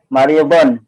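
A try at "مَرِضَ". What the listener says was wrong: Mariobon atau Maribo? Maribo, ini fi'il. Kalau Mariobon berarti dia ada tanwin. Fi'il tidak mungkin ada tanwin.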